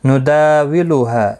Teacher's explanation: دا الف مدہ ہے، ہا الف مدہ ہے، دونوں کو ایک ایک الف کی مقدار کے برابر کھینچ کر پڑھیں گے